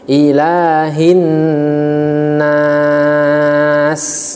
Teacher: Ilahi, ilahi, ya, hi ha besar bukan hi, tapi hi ha besar, dan tidak boleh dibaca tebal hi-nya, bukan ilahin hin, tapi ilahi hi, ya, bibir dalam posisi senyum ataupun rahang bawah diturunkan.